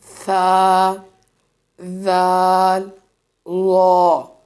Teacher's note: زبان کا سرا اور اوپر کے دانتوں کے اندرونی کناروں سے ادا ہونے والے حروف